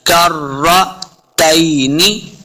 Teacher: सिर्फ रा को पुर पढ़ना है, काफ को मोटा नहीं करेंगे, रा के सामने लाना है काफ को, रा मुशद्दद है।